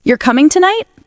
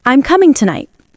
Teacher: You're coming tonight? The tone rises at the end. And in statements, I'm coming tonight. The tone falls at the end. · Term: intonation